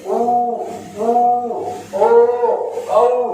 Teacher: आप देखिए होठ गोल हो रहे हैं, गोल हो रहे हैं, इसका मतलब वृत्तामुखी है।